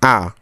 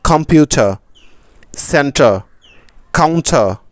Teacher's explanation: ব্রিটিশরা এটাকে বলে আ অর্থাৎ র এর উচ্চারণ করে না বাংলা স্বরবর্ণ সর আ এর মত উচ্চারণ করে থাকে ব্রিটিশরা এটাকে লেটার হিসেবে ব্রিটিশরা বলে কি আ আরো একটি জটিল বিষয় হলো এই লেটারটি যখন শব্দের মাঝে বা শেষে আসে তখন তারা এটাকে উচ্চারণ করে না বা মিলিয়ে পড়ে।